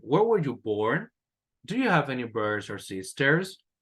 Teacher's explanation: these are questions, so we need to rise the intonation at the end